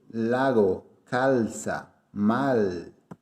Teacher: nunca se tiene el sonido de U, siempre se pronuncia como L